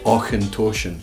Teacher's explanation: Now, Auchentoshan is the first pronunciation where we're going to have that CH sound. And that CH sound in Scots, we would pronounce that with a H sound